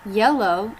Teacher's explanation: tongue front mid pressing against the roof of the mouth. you are talking about the Y consonant sound, and you say Through the teeth.